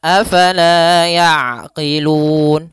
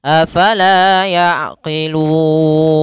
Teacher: huruf yang disukunkan karena waqaf maka dia dinamakan dengan mad aridukun untuk panjang Mad Arid di sukun sendiri Kita boleh memanjangkan dua harakat boleh empat harakat dan boleh pula En harakat